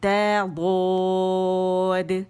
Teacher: دال موٹا نہیں پڑھیں گے، ہم نے ضاد موٹا پڑھنا ہے